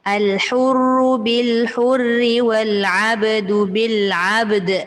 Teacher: Kena bunyi qalqalah ba, kena bunyi qalqalah dal.